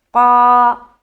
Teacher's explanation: قاف کو موٹا کرتے ہوئے ایک الف کے برابر کھینچنا ہے